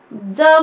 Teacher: ज म्हटलं तर बघा वरच्या दातांना टेकते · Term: दंत्य वर्ण